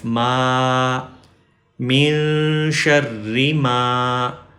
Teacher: تو اب میم کے بعد الف مدہ آ گیا یا الف لانگ واول آ گیا تو اب ہم میم کو لمبا کریں گے. میم کو اسٹریچ کریں گے.